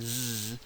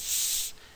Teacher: If you put your fingers lightly on the side of your throat while you pronounce s and z, you'll notice that your throat is vibrating for the z, but not for the s. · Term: voicing